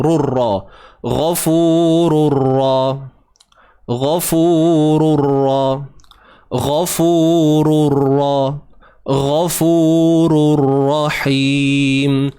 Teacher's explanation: tanwin bertemu ra. Tanpa gunnah. Ingat, tanpa dengung.